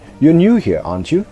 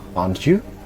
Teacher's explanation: I'm not sure if you're new here or not, so I use the question tag with rising intonation.